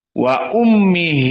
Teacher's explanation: Um dalam keadaan mim musyadadah maka dia wujubul gunah wa Ummi maka di sini ada madsilah walaua qasir tapi harus